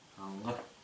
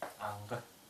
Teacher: Гласный заднего ряда, и смыкание происходит сзади.